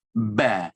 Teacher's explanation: Jadi ini makhraj utamanya dua bibir, asyafatan.